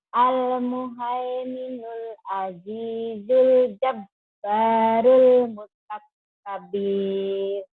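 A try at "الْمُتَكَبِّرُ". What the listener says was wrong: Bunda, kenapa panjang? Mutakabir, salah. Mutakabir. Karena tidak ada madnya di sini.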